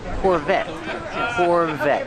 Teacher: the t is a stop T the E is silent Corvette Corvette pronounce a V with voice Corvette this is a